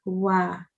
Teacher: So if you make your lips round and your teeth do not touch your lips, that's how you recite this sound, wow. Okay, so the sound is wa.